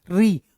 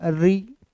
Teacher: री बोलते समय जीभ को चिपका लेना जहां चिपक रही है, री, तो ऐसा लगेगा जीभ का फ्रंट पार्ट टच हो रहा है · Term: अग्रस्वर